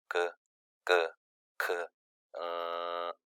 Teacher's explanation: 모두 다 구강의 가장 뒤쪽에서 소리가 나는 것을 확인할 수가 있습니다. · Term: 여린 입천장 소리